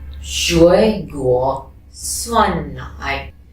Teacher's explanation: When both has third tone, the first one becomes second tone.